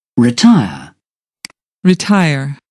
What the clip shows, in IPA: rɪˈtaɪər